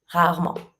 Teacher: we tend to skip the E because rarement is not very easy to say and it's kind of long.